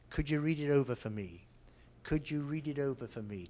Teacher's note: Because we're not stressing for, it becomes very weak. So it becomes fa.